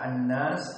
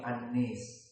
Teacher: usul qiroahnya membaca kalimat an-nas dengan Al imalah Al Kubra